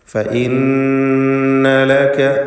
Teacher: ഫഇന്ന ലക, നൂൻ മുശദ്ദദയെ മണിക്കണം. ഷദ്ദുള്ള നൂനിനെ 2 ഹറക്കത്തിൻ്റെ അളവിൽ ഗുന്ന നൽകി ഉച്ചരിക്കുക.